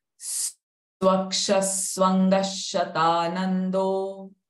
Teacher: Swaksha Swanga Shatanando. First visarga sound sa, second visarga sound sh.